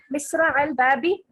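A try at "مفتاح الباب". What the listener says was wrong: Misra, it's not Misra. Miftah. Miftah. Miftahul Babi.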